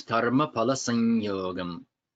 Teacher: So think of it as a double ya, and the first ya, that pressing of the first ya causes the sound to come out the nose · When it comes before ya, it becomes another ya. So when you pronounce that first ya, then it's a nasal sound. So sang, and as you say, prepare to say the second one, sanyogam, you hear it causes sing, the palate to vibrate and the sound to come through the nose.